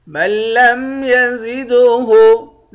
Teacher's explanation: زا کے بعد دال ہے، دال پر قلقلہ کریں گے، دال حروف قلقلہ میں سے ہے۔